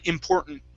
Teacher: there aren't any t's in there at all